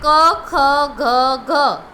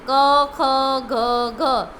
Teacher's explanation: ક્યાંથી બોલાય છે? ગળામાંથી બોલાય છે ને. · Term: કંઠ્ય